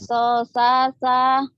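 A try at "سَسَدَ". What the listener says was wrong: Sosada, jangan sosasa. Ini mulutnya lihat. Sosada.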